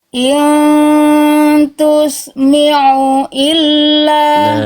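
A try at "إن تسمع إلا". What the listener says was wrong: Kalau tadi ainnya dia nggak neken tengah tenggorokan Bunda, tapi jadi hamzah, tapi disengaukan. Ya, apalagi setelahnya huruf hamzah, makanya makin nyaru bunyi ainnya. Harusnya kayak barusan, ditekan makhrajnya. Tusmi'u illa dan seterusnya, ya.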